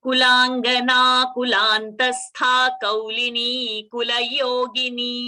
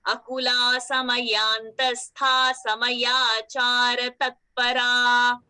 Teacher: kulantastha, tha mahaprana. Samayantastha, tha mahaprana.